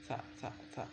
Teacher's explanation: Dia nyebutnya anginnya nggak banyak yang keluar. Sa di ujung lidah ketemu dengan ini gigi bagian belakang tapi yang bagian atas.